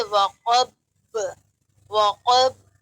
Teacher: جب با میں قلقلہ کیا جائے تب صورت یہ ہونی چاہیے کہ دونوں ہونٹوں کو ملا کر سختی سے ملا کر کھول دیں